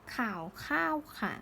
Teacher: ก็คือเสียงเอกเสียงโทและเสียงจัตวานั่นเอง